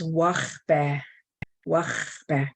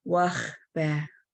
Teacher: There's that H that comes from your palate and the back of your throat. It's almost the aspirated H that you're blowing out